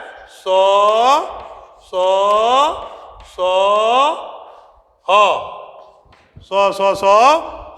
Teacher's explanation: सो, सो, सो, ह, सो, सो, सो, ह। इन चार वर्णों को ऊष्म वर्ण कहते हैं, क्योंकि इनका उच्चारण रगड़ या घर्षण से उत्पन्न होता है, इसलिए इसका नाम ऊष्म है।